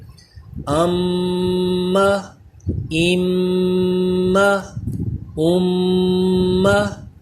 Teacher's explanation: جی میم کے بارے میں ہم نے جو اس سبق میں قواعد پڑھے ہیں، اس میں یہ پڑھا ہے کہ میم مشدد میں ہمیشہ غنہ کرتے ہیں، تو اس میں غنہ کریں گے، یعنی تھوڑی دیر لگا کے اس کی آواز بھی ناک میں لے کر جائیں گے، ایک الف کی مقدار کے برابر دیر لگائیں گے، ام ام ام۔ یعنی میم مشدد جہاں پہ بھی آئے گا اس طرح اس پہ دیر لگایا کریں گے۔